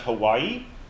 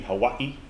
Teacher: There's a glottal stop in that word.